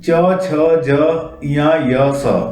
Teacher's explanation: तालु से निकलने वाले